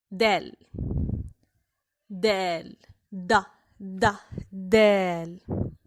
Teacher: A dal is the counterpart of the English letter D, which is pronounced by having the tip of the tongue pressed against the top of the mouth, right behind the front tooth, then slightly pushing air, separating the tongue and the upper mouth